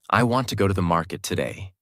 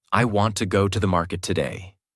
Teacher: Want, go, market are strong. Other words become lighter and faster. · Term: Natural American rhythm